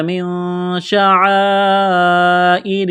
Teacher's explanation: نون ساکن کے بعد شین ہے، حروف اخفا ہے، غنہ کریں گے، آواز ناک میں چھپائیں گے